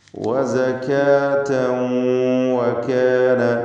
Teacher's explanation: വസകാതൻ എന്ന തൻവീനിനെ ഇദ്ഗാം ബിഗുന്ന നാഖിസ് നൽകി വാവിലേക്ക് ഭാഗികമായി ലയിപ്പിച്ച് മണിക്കുകയാണ് വേണ്ടത്. വഖഫ് ചെയ്യുകയാണെങ്കിൽ വസക എന്ന് ഹായിൽ വഖഫ് ചെയ്യണം.